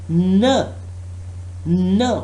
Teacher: When we talk about n, that is a nasal stop which involves airflow through the nose · Yes, exactly, this is nasal sound. That's why in n there is no airflow through the mouth, but there is still airflow through the nose